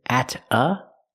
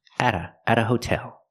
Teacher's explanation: The T in at changes to a fast D because it's between vowels.